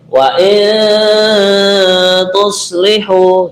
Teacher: di sini yang kita dengungkan wain nun mati ketemu ta adalah ikhfa